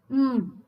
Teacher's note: ನಾಸಿಕ ಅಂದ್ರೆ ಮೂಗಿನ ಸಹಾಯದಿಂದ ಉಪಯೋಗಿಸಿ ಮಾಡುವಂತದ್ದು · ಹಮ್ ಅನ್ನುವಂತದ್ದು ನಾಸಿಕವನ್ನ ಮಾತ್ರ ಉಪಯೋಗಿಸತೀವಿ ಅಲ್ಲಿ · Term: ನಾಸಿಕ್ಯಹ ವರ್ಣಾಹ